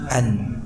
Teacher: Dan nun di dalam pengucapannya disertai dengan suara dengung atau gunnah.